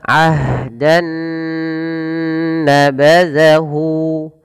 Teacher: Nun yang dimatikan ya teman-teman berarti bunyi n maka di sini awalnya bunyi n ketemu dengan n yang selanjutnya Nun maka caranya masukkan Nun yang pertama kepada Nun yang kedua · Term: idgam